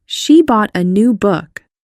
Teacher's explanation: A would be a function word, so it would be quick and unstressed.